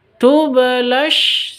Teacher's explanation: Jadi langsung masuk ke sin. Langsung tasydid ke sin.